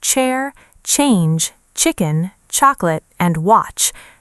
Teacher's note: That sound begins with a small burst before it continues. It's different from sh even though learners sometimes mix them up.